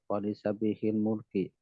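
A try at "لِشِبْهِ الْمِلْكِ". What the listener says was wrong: Nah, milki bukan mulki. Al-milku, kepemilikan. Kalau mulkun itu raja, penguasa.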